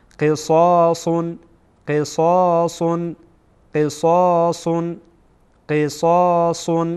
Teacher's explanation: صاد هم از حروف استعلا هست، پر باید ادا بشه.